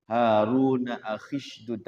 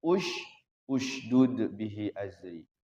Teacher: Jadi hamzah wasol itu dia ketika diwasol tidak hidup hamzahnya, mati.